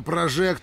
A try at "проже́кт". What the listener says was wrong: не прожект, а прожект. Надо правильно ударение это ставить.